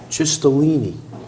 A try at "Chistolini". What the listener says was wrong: No, it's K, CH in Italian is pronounced as if it were a K. Chistolini.